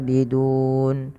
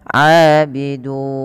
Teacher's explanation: Boleh 2, boleh 4, boleh 6. Maka kita boleh memanjangkan lafal dun dengan 2, 4 atau 6. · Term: mad arid lisukun